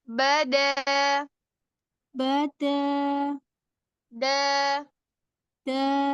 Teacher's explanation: Lubada bada bukan lubada pakai ujung ujung aja lubad lubada bada bada bada jangan ada nafas yang keluar